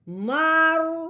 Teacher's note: میم کو را کے ساتھ ملانا بھی ہے، را کو پر یعنی موٹا بھی کر کے پڑھنا ہے۔